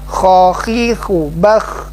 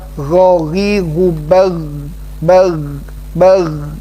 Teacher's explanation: Kalau kha lebih ke sana mengeluarkan hams, ya. Kalau gha tidak boleh mengeluarkan desisan, ya, udara.